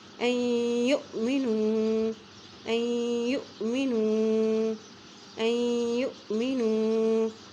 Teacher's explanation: حمزہ ساکن ہے تو پھر یہاں پہ ہم جھٹکا دے کے پڑھیں گے